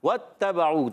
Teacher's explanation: واو کی ادائیگی ہونٹوں کی گولائی سے. اور وتا، تا مشدد ذرا رک کر ادا کریں، مگر تا پر زبر ہے اور با پر بھی زبر ہے، حرکات کو نہیں کھینچیں گے.